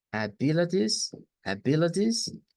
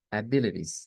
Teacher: nos cambia la t porque queda en medio de vocales y se nos dice mire puede ser como una d abilities abilities o puede ser como una r abilities De hecho